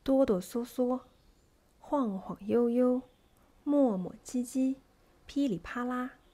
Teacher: The second type of quadrisyllabic words has a neutral tone in the second syllable and stress on the first syllable.